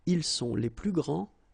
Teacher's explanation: you don't pronounce the final S